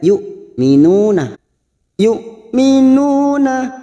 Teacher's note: Nah di sini ada hamzah sukun. Kita baca tegas. Tidak boleh diseret.